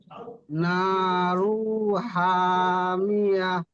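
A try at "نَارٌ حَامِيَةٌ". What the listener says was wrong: নারু হবে না, নারুন।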